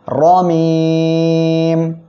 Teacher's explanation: আমরা এখানে ওয়াকফ করলে মিম অক্ষর সাকিন হবে, আর এক আলিফ মদের পরের অক্ষরে ওয়াকফের কারণে মধ্যে আরজি হবে, 3 আলিফ টেনে পড়ব। আর এখানে দেখেন র অক্ষরের উপরে জবর আসছে, মোটা করে পড়তে হবে